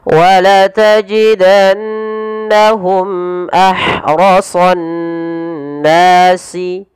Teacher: Kemudian pada lafal mimat yang bertemu hamzah, ini kita namakan dengan idhar syafawi, dan yaitu harus dibaca dengan jelas suara mimnya tanpa ada penahanan